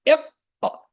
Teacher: You'll feel the back of the tongue is rising and touching the ceiling, which is not the ceiling, which is the upper throat, the upper palate. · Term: qaf